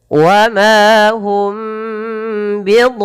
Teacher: tahan mimnya ketika bertemu ba. Nah, biasanya banyak orang yang dia tidak menahan bacaan mim ketemu ba.